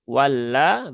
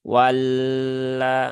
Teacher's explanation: Jangan ditahan terlalu lama ya. Cukup ditunaikan tasydidnya saja.